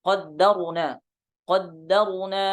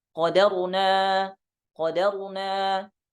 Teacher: Itu dengan meringankan huruf dalnya. Jadi syiddahnya tidak ada. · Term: takhfifid dal